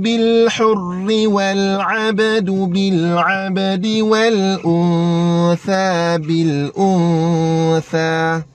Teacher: Tha, lidah mesti kena keluar.